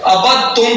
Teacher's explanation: اب یہاں ابد تم نہیں پڑھا جائے گا، دال نہیں پڑھا جائے گا، ابد تم پڑھا جائے گا، تا کو پڑھا جائے گا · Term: ادغام متجانسین